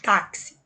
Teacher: O X eu pronuncio com som de KS. A letra X está representando dois fonemas.